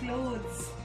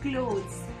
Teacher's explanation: स साउंड जो आखिरी में आता है वो सही नहीं है, उसमें ज साउंड आना चाहिए